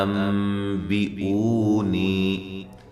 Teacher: یہ نون ساکن کا اقلاب ہے مع الغنہ